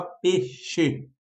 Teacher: peixe é uma palavra que ocorre o quê? Não um acréscimo, mas a supressão, a retirada do i.